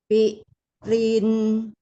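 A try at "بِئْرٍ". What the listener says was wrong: Yuk, jangan ada jeda diulur dari hamzah ke ro.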